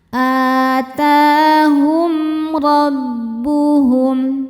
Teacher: Karena mim sukun tidak menghadapi mim atau ba melainkan menghadapi ro. Cara bacanya mim dibaca dengan jelas. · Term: izhar syafawi